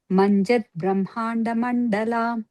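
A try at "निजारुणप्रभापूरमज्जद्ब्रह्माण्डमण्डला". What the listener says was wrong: Here it's only Prabhapur. It's not long. And it's not Manjat, but Majjat Brahmanda Mandala.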